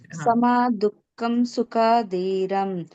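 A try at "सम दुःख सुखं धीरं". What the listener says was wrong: ಅಲ್ಲಿ ದುಃಖಂ ಇಲ್ಲ ಸಮ ದುಃಖ ಸುಖಂ ಧೀರಂ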